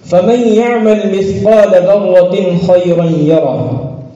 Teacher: تنوین سے خا کی طرف انتقال بلا کسی تاخیر کے سرعت کے ساتھ ہوتا ہے